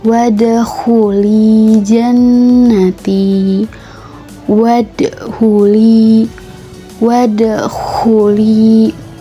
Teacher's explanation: Terdapat huruf dal yang berharakat sukun berada pada tengah ayat. Maka dal tersebut hukum bacaannya adalah qalqalah sugra dan bacanya harus dipantulkan.